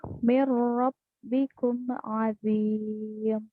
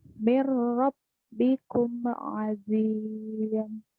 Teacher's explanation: Nun mati ketemu dengan huruf ro, jadi langsung dilebur ke huruf ro, tanpa adanya gunnah.